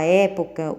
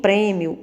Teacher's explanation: na palavra época, o som representado pelo E, ele é aberto. Em prêmio, ele é fechado